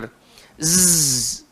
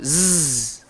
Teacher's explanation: Cara menyebutnya dengan jalan hujung lidah, langgar belakang gigi bawah, dan sifatnya kena berdesir. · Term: Huruf zai